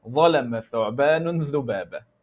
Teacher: The tip of the tongue with the bottom edge of the two upper incisors.